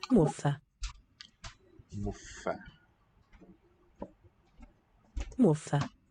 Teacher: Strikes my ear as a long F, but it's not shown to be doubled.